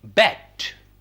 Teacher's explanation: another vowel which is a mid vowel e as in bet